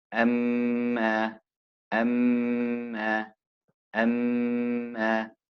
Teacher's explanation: Thumma, thumma. So when there's a tashdid on the meme or the noon, you pull it and you extend the sound and sort of hum